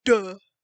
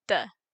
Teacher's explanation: in Gaelic it's voiceless but still unaspirated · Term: broad unlenited D